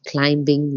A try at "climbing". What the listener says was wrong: Yeah, climbing, I wouldn't pronounce the B. I have checked on it before, and it's so just climbing now. I think in the earlier English times it was pronounced, but not now.